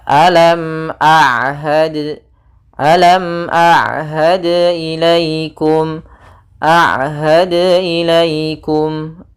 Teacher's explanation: ain di antara keduanya tidak terlalu ditahan dan tidak terlalu dialirkan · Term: sifat bainiyah